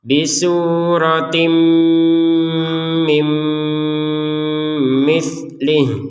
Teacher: Jadi tanwin bertemu mim ini dibaca dengan dengungan.